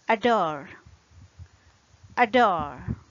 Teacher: The stressed syllable in this case is the second syllable. So we use schwa sound for the first syllable. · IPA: əˈdɔr